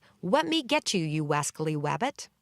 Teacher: Elmer substitutes W's for L's